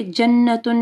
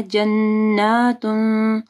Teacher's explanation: اگر یہ کھڑی زبر نہیں ہوگی تو پھر جنتن، لیکن کھڑی زبر ہے تو آپ کو یعنی ایک الف پڑھنا ہے